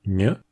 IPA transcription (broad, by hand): ɲ